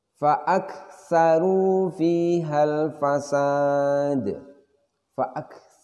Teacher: Di situ terasa aliran nafas pada huruf kaf ketika sukun. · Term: Hames